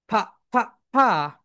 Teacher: F. F যখন উচ্চারণ করবে তোমাদের উপরের দাঁত নিচের ঠোঁটের সঙ্গে হালকা টাচ করবে।